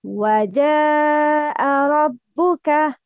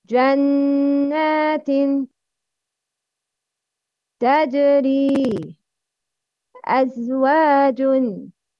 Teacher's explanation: Jim is مُعَتَّشَة. It's emitted from the middle of the tongue.